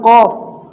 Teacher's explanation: قاف کو منہ بھر کے پڑھنا ہے اور اس کا مخرج کیا ہے؟ زبان کی جڑ اوپر کے تالو کے نرم حصے سے مل کر ادا ہوتا ہے۔ تالو کے دیکھو 2 حصے ہوتے ہیں، ایک سخت حصہ اور ایک نرم حصہ۔